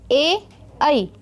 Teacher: कहाँ से आवाज़ निकल रही है? कंठ से, है ना? लेकिन साथ ही साथ तालु पे भी लग रहा है ना? · इसीलिए इसका आंसर होगा ऑप्शन डी, कंठ तालव्य। ठीक है, ये कंठ से भी बोले जाते हैं और साथ ही साथ आवाज़ कहाँ से निकलती है? तालव्य को भी टच करती है।